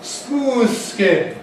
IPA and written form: ˈsmuːð ˈskɪn (smooth skin)